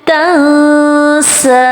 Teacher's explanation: نون ساکن کے بعد سین آ رہا ہے، تنسا، اس طرح ہم نے نون کی آواز کو چھپانا ہے